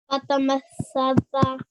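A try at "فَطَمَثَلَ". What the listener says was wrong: Mathala. Remember, that's a massa. This is a matha.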